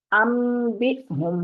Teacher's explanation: نون ساکن کے بعد با اگر آ جائے تو ہم نے نون کی آواز کو میم میں بدلنا ہے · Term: اقلاب